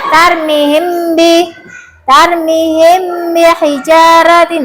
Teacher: Terus ifa syafawi apabila ada mim sukun bertemu dengan ba, cara membacanya disamarkan.